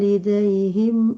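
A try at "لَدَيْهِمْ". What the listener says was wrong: Ladai bukan tidai.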